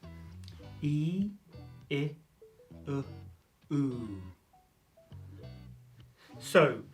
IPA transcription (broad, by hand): i:, ɪ, ʊ, u: